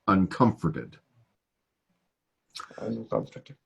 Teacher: The emphasis is on the second syllable, uncomforted.